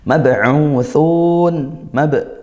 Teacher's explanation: qalqalah sugro dipantulkan bacanya. U ini mad th'i dommah di sukun tsun.